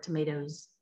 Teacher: So you want them to listen for it because we've got schwa in there, right? And our plural sound doesn't sound like an s, it sounds like a z · it's more of a z sound at the end because we're coming after a loud sound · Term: zzz sound